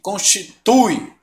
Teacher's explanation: Ó, o U é bem mais forte que o I.